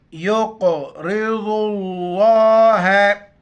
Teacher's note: قاف کو موٹا کریں گے اور قاف پر قلقلہ کریں گے ۔ قلقلہ کہتے ہیں کہ منہ میں آواز کو راؤنڈ دینا، · ضاد کو لفظ اللہ کے ساتھ ملائیں گے ۔ لفظ اللہ سے پہلے ضاد پر پیش ہے تو لفظ